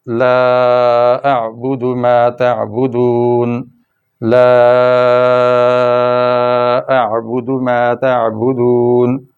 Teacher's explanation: لا اعبد ما تعبدون، لا اعبد ما تعبدون، اس لا کو دیکھیں، زبر کے بعد الف، چھوٹی مد تھی، مد اصلی، آگے حمزہ آ گیا تو یہ مد فرعی بن گئی، یعنی مزید شاخ آگے بڑھ گئی مد کی، اس لیے یہ غیر معمولی لمبی ہو گئی۔